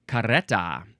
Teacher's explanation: There is the double R there, so I think it is good to do the little tongue flutter.